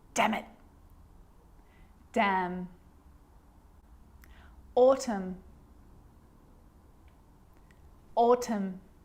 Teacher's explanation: when i'm explaining the silent letter n it actually is silent when it's next to m